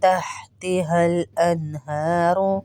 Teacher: انہاروں میں ہا کے اوپر کھڑا زبر ہے، اس کو کھینچیں گے ایک الف کے برابر. ہا سینے والا ہا ہے، اس کو اسی طرح پڑھیں گے.